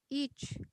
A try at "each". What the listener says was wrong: Make it longer. Each.